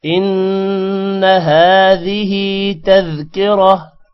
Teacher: نون پر غنہ ہوگا، نون کو لمبا نہیں کرنا